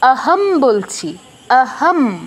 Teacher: অর্ধ মানে কি, ময়ের পূর্ণ মটা থাকবে না, ময়ের অটা চলে যাবে